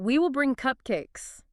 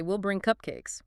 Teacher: The will just melts right into the word before it.